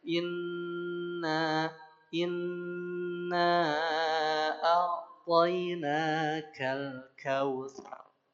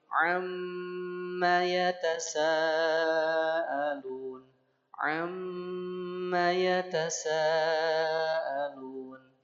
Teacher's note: Rasakan ketika membaca gunah masuk ya suaranya ke rongga hidung.